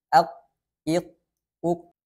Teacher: Tidak ada aliran suara dan tidak ada juga aliran nafasnya. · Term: syiddah